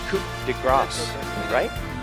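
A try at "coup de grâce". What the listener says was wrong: don't pronounce the P, It's a silent P, everybody.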